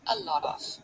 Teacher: So here, lot, the T becomes a flap T, a lot of. It's just this little tap.